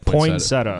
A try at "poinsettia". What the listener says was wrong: You're adding a vowel or a syllable in there. I think it's poinsettia. You almost said poinsettia.